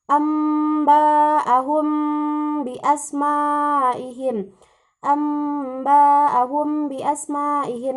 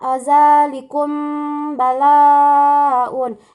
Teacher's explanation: mim sukun bertemu dengan huruf ba. Cara membacanya itu didengungkan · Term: ikhfa syafawi